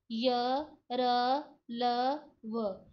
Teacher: इसमें जिह्वा जो है पूरी तरह से किसी भी भाग को जो है छू नहीं रही है और साथ में गले से भी आवाज आ रही है। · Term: अंतस्थ व्यंजन